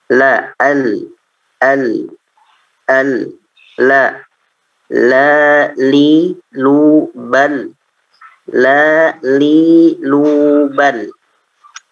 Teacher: Lam ini berada di dua tepi lidah paling luar hingga ujung lidah ya, hingga ujung lidah atau ujung lisan ya. Ini naik ke atas ya, beserta bagian langit-langit mulut bagian atas yang sejajar. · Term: huruf lam